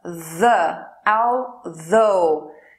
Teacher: TH aqui é vozeado, a garganta vibra.